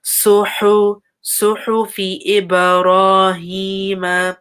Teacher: there's a ha, a hot ha. So make sure it's from the middle, like, of your throat. So make sure you hear that, like, hotness.